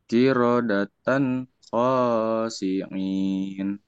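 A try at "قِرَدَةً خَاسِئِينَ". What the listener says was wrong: Ini bukan ain ya, hamzah. Karena ini ikro 4, baca apa adanya dulu ya, ujungnya dibaca. Betul kalau baca Quran, qiradatan khasiin, betul ya. Tapi kita mulai melatih mana panjang mana pendek dulu. Jadi dibaca apa adanya. Ulang, baca apa adanya dulu ya. Qiradatan khasiina. Kalau dihentikan betul. Qiradatan khasiin, betul.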